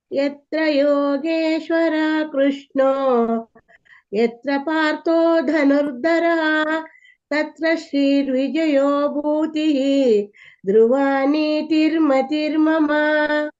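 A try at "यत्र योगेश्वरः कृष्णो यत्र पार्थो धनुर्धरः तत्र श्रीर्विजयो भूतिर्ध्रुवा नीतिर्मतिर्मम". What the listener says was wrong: ಮಹಾಪ್ರಾಣಗಳನ್ನ ಒಂದ್ ಸ್ವಲ್ಪ ಒತ್ತು ಕೊಟ್ಟು ಹೇಳಿ ಅಷ್ಟೇ, ಉಳಿದಿದ್ದೆಲ್ಲ ಸರಿ ಇದೆ.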